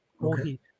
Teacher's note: kohi, I would say it's a flat intonation